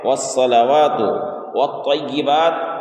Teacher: طا کو موٹا کر کے پڑھنا ہے